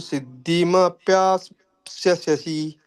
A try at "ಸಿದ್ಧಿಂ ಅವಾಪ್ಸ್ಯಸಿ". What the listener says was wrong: ಸಿದ್ಧಿಂ ಅವಾಪ್ಸ್ಯಸಿ, ಮ ಆದ್ಮೇಲೆ ಅಲ್ಲಿ ಸೇರಿಸ್ಬೇಕು. ಸಿದ್ಧಿಂ